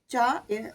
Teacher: നാവിന്റെ മധ്യഭാഗം പോയി മുട്ടുമ്പോഴാണ് ച എന്ന അക്ഷരം ഉണ്ടാകുന്നത്